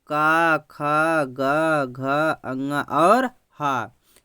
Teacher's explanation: ऐसे व्यंजन जो गले से बोले जाते हैं, कंठ से बोले जाते हैं। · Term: कंठ व्यंजन